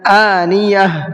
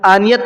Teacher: گولتا پر سانس توڑ رہے ہیں تو ہم کیا پڑھیں گے؟ گولتا کو ہا بنا دیں گے